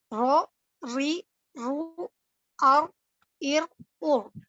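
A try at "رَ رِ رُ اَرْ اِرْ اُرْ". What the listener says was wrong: Nah, itu masih agak sedikit bule tuh. Aru, ir, ur. Jadi posisinya jangan nyamping.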